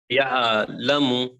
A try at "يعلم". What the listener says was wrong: या आइन की आवाज थोड़ी सी अच्छी आना. यअलमु.